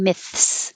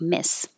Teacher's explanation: you do have to have that th in there myths so come from between your teeth to behind your teeth with your tongue